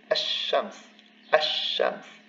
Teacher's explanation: So here, the vowel of liaison is maintained because it's the beginning of the word, but the lam disappears because it's a solar consonant